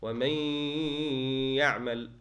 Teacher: the noon sakina into the ya here. وَمَن يَعْمَلْ غُنَّ. You have to use the nasal passage. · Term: idgham with ghunna